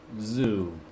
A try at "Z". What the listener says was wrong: That's American for Z in English.